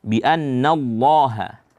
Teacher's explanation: Ya'lam bi annallaha an, itu nun mati, bukan, bi an itu ada nun yang bertasydid, maka dibaca gunnah, gunnahnya diperjelas dan dibaca panjang